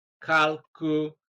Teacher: the second syllable from the end of the word, and that is LA